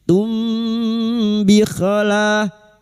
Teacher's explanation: Kita dengungkan selama tiga harakat. Tum bikola la lam alif dua harakat mad thabi'i. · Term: samar di bibir